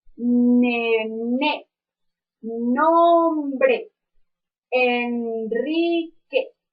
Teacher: cuando hacemos el sonido de la n nuestras cuerdas vocales hacen una pequeña vibración